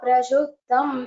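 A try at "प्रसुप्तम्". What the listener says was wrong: Well, here it is not Prashuptam, it is Prasuptam, Saraswati Sa.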